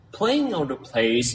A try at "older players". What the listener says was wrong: Okay, older players. Bạn thiếu gì? Bạn thiếu cái phần cuối này. Older players. Nói rõ nhé. Players.